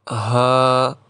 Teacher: ہا کو ایک الف کے برابر کھینچیں گے